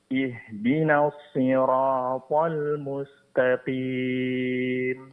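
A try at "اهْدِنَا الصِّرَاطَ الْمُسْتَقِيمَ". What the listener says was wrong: Ihdina di sini sempurnakan bunyi kasrah pada hamzatul wasal. Ihdina. Nah, kemudian tasydid pada huruf shad jelaskan dan ditebalkan huruf shadnya dan sifat safir itu dijelaskan. Ihdinas sirata. Huruf H-nya Pak. Sinnya tipiskan. Al-mustaqim. Dan mad arili sukunnya panjangkan 4 harakat.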